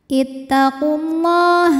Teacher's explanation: lam berbaris fathah panjang maka lam panjang dua harakat